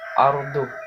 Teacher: Ra-nya dibaca tafkhim karena sebelum ra itu ada harokat fathah.